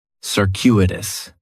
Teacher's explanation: The stress is going to be on that second syllable. And that CU is kind of like you're saying the letter Q.